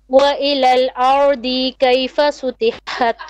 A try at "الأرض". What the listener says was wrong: أرضي short vowel أرضي You're still stretching a bit.